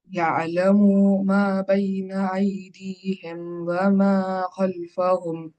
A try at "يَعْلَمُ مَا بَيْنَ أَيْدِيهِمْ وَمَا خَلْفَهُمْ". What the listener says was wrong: یہاں تھوڑا سا کھینچ ڈالے، اس کو پھر سے پڑھنا۔ یعلم، یعلم، پڑھو۔ ٹھیک ہے، ما بین، بین یا لین، ما الف مدہ، ما بین ایدیہم، یہ یا جو ہے وہ لین ہے، یہ مدہ ہے۔ ما بین ایدیہم وما خلفہم۔ ٹھیک ہے، اب یہاں سے یہاں تک پڑھ سکتے ہیں۔